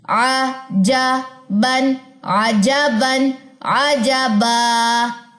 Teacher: ایک زبر ڈراپ ہوگی, ایک زبر الف کے ساتھ مل کے لمبی پڑی جائے گی. کتنی لمبی, 2 سیکنڈ. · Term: 2 زبر کا وقف